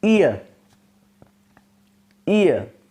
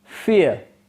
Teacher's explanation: the tongue moves from half close front to half open center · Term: centering vowel, centering diphthongs